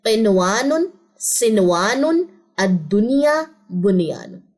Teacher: تو یہاں پہ ادغام نہیں ہوتا بلکہ نون پہ صرف اظہار ہوتا ہے